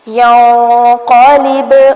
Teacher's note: نون پر اخفا ہوگا جبکہ با ساکن ہے اس لیے ہلا کر پڑھیں گے، کلکلا کیا جائے گا